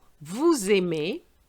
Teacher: Have you noticed I link the S with the A, which sounds much better than nous aimons.